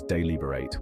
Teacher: The pronunciation is deliberate with the stress on the second syllable.